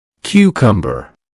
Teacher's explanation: That's 3 syllables. Notice the stress on the first syllable.